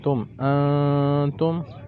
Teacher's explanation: میں نے نون کی آواز کو چھپایا ہے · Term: اخفاء